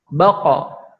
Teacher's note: Sifatnya tidak mengeluarkan nafas, jahar. Kemudian syiddah yaitu ditekan.